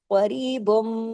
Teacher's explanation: قریب، اب دیکھیے با دو پیش بن کی تنوین ہے لیکن ختم ہو گئی تنوین، اور یہاں ادغام ہو گیا، اور میم مشدد ہے، آگے بڑا غنہ ہوگا، اکمل غنہ، دیر تک آواز ناک میں چھپے گی۔ قاف کو ہیوی کرنا ہے، را کو باریک، قریبم، کیونکہ یہاں پہ آگے تشدید آئی ہے نا، تو تنوین با دو پیش بن کی تنوین ختم ہو گئی۔